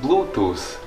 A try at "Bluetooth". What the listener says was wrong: You Latvians just can't pronounce the sound like it's not that complicated. You stick your tongue in between your teeth and you say th, not s. It's Bluetooth.